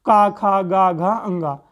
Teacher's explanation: इनको हम कंठ से बोलते हैं